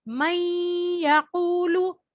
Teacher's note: نون silent ہو گیا, میم کو یا سے سختی سے ملانا ہے کیونکہ تشدید والا حرف ہے. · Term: ادغام